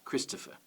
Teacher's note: when i say it i put the stress on chris the rest of it is unstressed